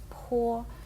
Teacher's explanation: звук пхо в китайській мові має придихання